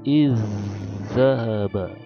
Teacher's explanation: zal pertama seolah-olah tidak ada, langsung ke zal kedua dengan tasdid